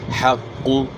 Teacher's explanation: حا کی آواز گلے کے درمیان سے، یعنی حا کو ہا سے چینج نہیں کرنا، حق کو نہیں پڑھنا، حا پڑھنی ہے، حق۔